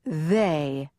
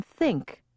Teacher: pairs if you remember the two th sounds you'll remember that one had a buzz to it as in they and the other did not as in think technically this is called voicing you can say that the sounds